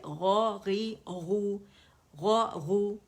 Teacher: موٹے ہیں دونوں, غی موٹائی میں کمی آ جائے گی